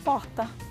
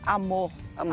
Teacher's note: no final de sílaba, esse som do rótico quase não aparece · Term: róticos